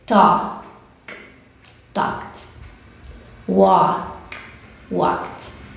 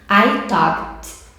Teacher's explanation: Mas nós já sabemos que o K é voiceless. Então, sempre no ED você vai dar som de T.